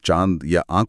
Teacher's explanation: नाम में ही नासिक है लेकिन इसमें ध्वनि मुंह और नाक दोनों जगह से एक साथ बाहर आती है। · जब चांद बोला जाता है तो हवा मुंह से भी निकलती है और नाक से भी एक गूंज आती है। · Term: अनुनासिक